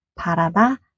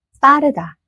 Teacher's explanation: Next double 비읍 is called 쌍비읍. Here, your lips push out the sound with force.